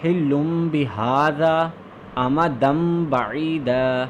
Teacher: हम लोगों ने नून को जो है मीम के साथ चेंज कर दिया था और इसी को हम लोग इक़लाब कहते हैं